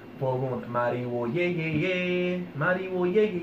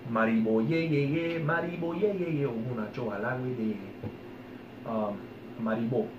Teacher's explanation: If you say it fast enough, Mariwo, it kind of turns into a B.